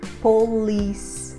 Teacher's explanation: letra S nós não vamos pronunciar esse som da letra e nós colocamos a sílaba forte na sílaba com l · polícia nós falamos polícia polícia termina com a letra E então nós vamos terminar com o som da letra S nós não vamos pronunciar esse som da letra e